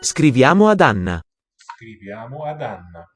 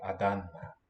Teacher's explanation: Oh, what's nice about this is it shows the underlying form of ah Because the vowel follows, the D is preserved. Adanna. It's not an addition of a D, but a retention.